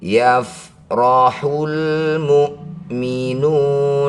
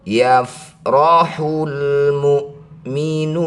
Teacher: Cara bacanya nu panjangkan enam harakat. Huruf terakhir sukunkan. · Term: mad alif lukun